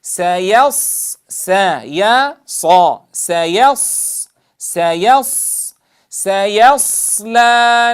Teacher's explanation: نقول سيا ثم ننطلق إلى الصاد المستعلية المطبقة